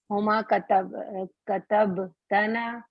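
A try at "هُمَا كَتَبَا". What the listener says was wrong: نو نو نو نو نو ابھی ہمیں سکون نہیں لے کر آنا ہے. ابھی سب لیٹرز کے اوپر فتح فتح چل رہے ہیں. کتبتا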